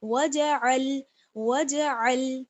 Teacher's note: عین کا مخرج کیا ہے؟ حلق کا بیچ والا حصہ